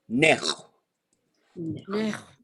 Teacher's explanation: very slight puff of air that comes through. It's not voiced, but it goes right at the end. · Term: underline X sound